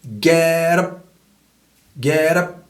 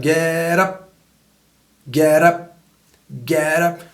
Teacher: Comme une sorte de R roulé, mais avec un seul roulement.